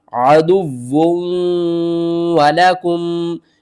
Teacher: ہم واو کو دوسرے واو کے ساتھ ملا کر پڑھیں گے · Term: ادغام